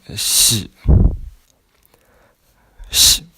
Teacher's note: the X is the SH sound stretched